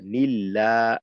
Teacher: আল্লাহ শব্দের ডানে জের থাকার কারণে এটাকে পাতলা করতে হবে